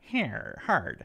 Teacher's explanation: open for British English and more hard for American English meaning we really stick our tongues up and backward to say that clear ER sound